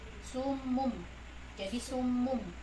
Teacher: Summun, kan ini summun bertemu dengan ba, jadi dia berubah bunyi jadi mim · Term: iqlab